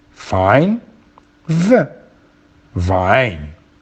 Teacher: the contact is between the lips and the teeth